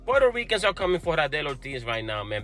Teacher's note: in contrast to standard American English that's stress timed, syllables are pronounced in a short and snappy fashion, so d-d-d instead of d-d-d. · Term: syllable timed rhythm